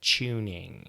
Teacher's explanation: a British accent who will add that little bit of CH into the T sound